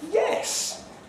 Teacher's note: with a high fall